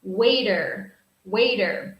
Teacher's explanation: remember in American English in American English this T sound sounds like a D sound